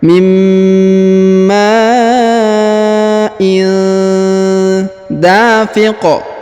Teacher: Khuliqa mimma il, kemudian tanwin in bertemu dengan da, maka didengungkan dan disamarkan.